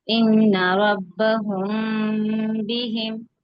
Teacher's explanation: غنہ کر رہے ہیں لیکن میم کو میم سے نہیں ملا رہے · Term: اخفاء شفوی